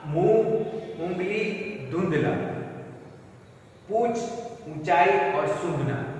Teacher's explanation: न ऊ का उच्चारण मैं नाक से भी कर रहा हूं मुंह के साथ साथ। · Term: अनुनासिक